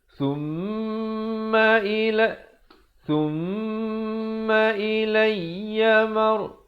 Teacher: Selain daripada nun, mim yang bersabdu juga dibacakan dengan dengung 2 harakat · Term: Mim bersabdu